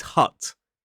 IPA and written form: hʌt (hut)